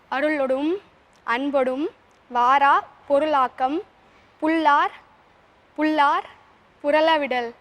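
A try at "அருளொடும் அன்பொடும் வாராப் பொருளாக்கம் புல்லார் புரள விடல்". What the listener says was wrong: வெரி good, well done. உங்களுக்கு முழு மதிப்பெண்கள்.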